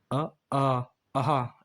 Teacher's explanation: स्वरों का उच्चारण स्थान कंठ से अ आ अहा इनका इनका उच्चारण होता है